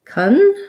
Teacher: because that CON is unstressed in the first syllable, it's going to have a schwa vowel, and it's going to sound like kun.